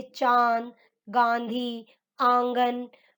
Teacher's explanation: अनुनासिक, इनका उच्चारण नाक और गले दोनों से होता है